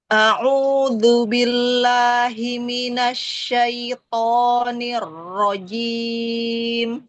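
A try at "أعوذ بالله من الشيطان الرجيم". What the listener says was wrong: Lembutkan lagi yang di hamzah di awal. A'udzu.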